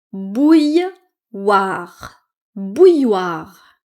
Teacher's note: Donc ici, il y a deux L, mais on ne les prononce pas.